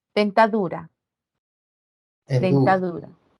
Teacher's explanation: Caen en la sílaba du. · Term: sílaba tónica